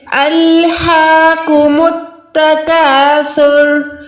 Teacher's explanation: میم کو ڈائریکٹ تا کے ساتھ ملانا ہے، الف اور لام کو یہاں پر چھوڑ دینا ہے۔ · سا پہ ہم نے یہاں پر وسل ساؤنڈ یعنی سیٹی کی آواز نہیں نکالنی، یہ بالکل نرم حروف ہے